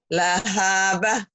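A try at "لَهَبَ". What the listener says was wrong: Bukan. Panjangnya lahnya doang. Ada haknya. Ada haknya itu mah. Nggak ada hanya. Ini ujungnya nggak ada hanya. Ha ini iya. Maksudnya ujungnya ibu tadi lahabah. Jangan lahabah. Direm ya. Lahaba.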